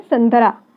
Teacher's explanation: अनुस्वार का उच्चारण हम नाक से करते हैं।